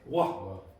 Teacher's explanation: a lot of Dublin speakers would exaggerate that glottal stop at the end